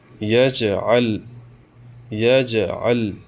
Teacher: جیم حروف قلقلہ میں سے ہے، ہم یہاں پہ پڑھتے وقت ان کے مخرج ٹکر کھا کے الگ ہو جائیں گے، اور لام حروف قلقلہ میں سے نہیں ہے، اس پہ جزم ہے، سکون ہے، لیکن ہم اس پہ قلقلہ نہیں کریں گے۔